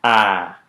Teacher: made with the oral cavity open and the tongue toward the front